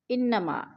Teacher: انا کی نون مشدد ہے، غنہ کریں گے، سختی سے جما کر پڑھیں گے